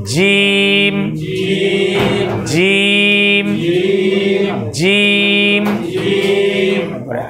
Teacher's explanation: জিম বলেছিলাম জিহ্বার মাঝের অংশ আর আমাদের তালুর মাঝের অংশ ওখানে মিশাবেন আর শেষ করার সময় জিহ্বা আমাদের ঠোঁটের যে শুকনো অংশ এই দুইটা এক জায়গায় হয়ে যাবে।